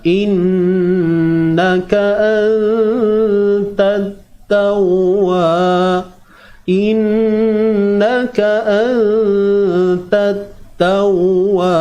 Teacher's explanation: nun mati bertemu ta, ikhfa hakiki, sembunyikan nun ini biar lidah kita ni tergantung, anta, dan dengung itu dilakukan dengan nipis saja, ringanlah bunyi dia.